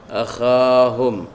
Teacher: Ada beza antara ha dengan kha. Kalau kha itu dia duduk di langit-langit nah. Duduk atas mana kita bagi ada bunyi sikit. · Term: makhraj huruf kha